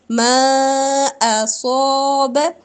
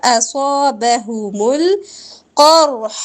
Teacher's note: ما پر مد کریں گے، اصاب صاد پور ہوگا